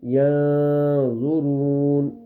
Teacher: اور اخفا کس کو کہتے تھے کہ نون کی آواز کو ناک میں مکمل نہیں چھپائیں گے بلکہ آدھی آواز ناک میں چھپے گی